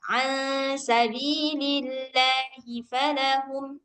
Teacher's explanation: seharusnya dia nggak usah sampai terlalu panjang gitu. Sekali ketukan aja.